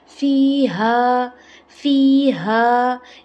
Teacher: یہاں پہ دیکھیں فی ہا حلق کے آخر سے، اور الف سے پہلے آ گیا زبر، یعنی اسے ایک الف برابر کھینچا، فی ہا. یہاں پہ جو یا ہے، یا کے اوپر ساکین ہے، اس سے پہلے کیا ہے، زیر ہے.